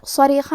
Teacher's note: کلمت صریخہ میں حرف الصاد ہے. صاد حروف تفخیم میں سے ہے تو ہم یہ حرف کو بھاری آواز میں پڑھیں گے